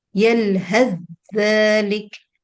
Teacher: But if I'm going to merge it, then there is no tha. Okay, you do not pronounce tha, you just give dhal a shadda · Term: إدغام